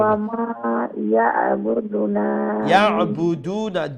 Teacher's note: আইন গলার মধ্যে অংশ থেকে উচ্চারণ করুন